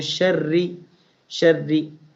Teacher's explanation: And sharri is thin because under ra we have kasra, under ra we have zair.